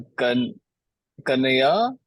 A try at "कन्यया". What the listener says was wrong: कन्यया। कन्यया। Double आएगा। कन्यया।